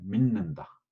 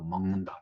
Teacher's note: 혀끝이 윗잇몸에 붙었다 떨어지면 하는 건데, 조음 이치는 같은데 이제 콧소리화돼 가지고 디귿이 니은으로 발음, 믿는다. 그러니까 앞에 있는 게 뒤에 콧소리, 미음, 니은의 영향을 받아가지고 콧소리로 변하는 거예요. 먹는다도 마찬가지인데, 니은이 콧소리죠.